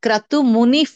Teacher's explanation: F sound H sound వస్తాయి విసర్గ తర్వాత క వస్తే హెచ్ సౌండ్ విసర్గ తర్వాత పకారం వస్తే ఎఫ్ సౌండ్ · విసర్గ తర్వాత పా పకారం వస్తే ఎఫ్ సౌండ్